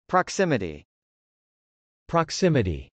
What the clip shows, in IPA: prɑksˈɪməti